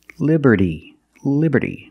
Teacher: we see that t in Liberty is between vowels so it's pronounced like a fast D